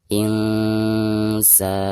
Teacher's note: Insana, nun sukun atau nun mati berhadapan dengan salah satu huruf ikhfa, di sini huruf sin ya. Maka cara membaca nun sukunnya itu harus disamarkan. Sekaligus ketika membaca sa-nya dipanjangkan 2 harokat karena ada harakat fathah sa berhadapan dengan alif sukun.